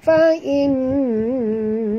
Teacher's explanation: nun bertasydid, wajib dengung, wajib al-ghunnah.